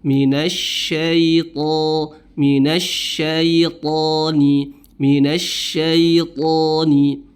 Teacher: Huruf to tebal ya, karena dia memiliki sifat isti'la dengan itbaq ya, isti'la dengan itbaq, sehingga suara atau bunyi hurufnya tebal.